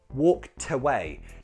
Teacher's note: Notice that the t links into that next word, walked away.